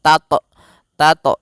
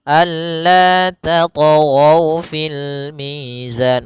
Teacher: Hati-hati membacanya jangan sampai membaca dengan adanya hamzah. Jangan tat tat tapi dia alla tat fil mizan mengalir saja. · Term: qalqalah